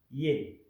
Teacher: lo que hace que sea un diptongo de la e con una i, ye.